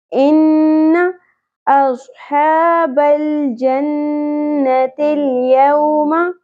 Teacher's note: ان نون مشدد غنہ ہوگا، آواز کو ناک میں کھینچنا ہے. ان زبر کو زیادہ نہیں کھینچنا، ان نہیں پڑھنا.